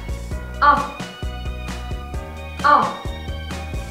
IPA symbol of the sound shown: ɒ